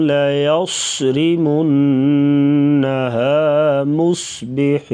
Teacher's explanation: منہ یہاں پر بھی غنہ کریں گے، نون کے اوپر شد آ گیا ہے تو مصبحین صاد کو پر پڑھیں گے، ہا گلے سے ادا کریں گے. لَيَصْرِمُنَّهَا مُصْبِحِينَ مُصْبِحِينَ اذ اقسموا لَيَصْرِمُنَّهَا مُصْبِحِينَ وَلَا يَسْتَثْنُونَ یس سیٹی جیسی آواز سا کو نرمی سے ادا کیا جائے گا، سین اور سا میں فرق کر کے پڑھیں گے.